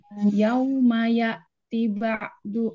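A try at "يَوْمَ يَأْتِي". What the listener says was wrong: Yauma ya'ti, T-nya panjang.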